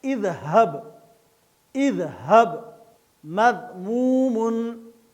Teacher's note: ذال نرم اور باریک ادا ہوگا